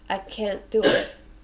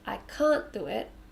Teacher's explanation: But if you're pronouncing it our way, I can't do it, even if we can't hear the t sounds, you've used the r sound, so we know you mean can't